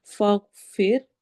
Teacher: غائن موٹا ہے، پھر میں روا باریک ہے